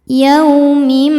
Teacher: Yau ada harfulin karena ada wau sukun sebelumnya berharakat fathah. Cara bacanya lembut atau lunak.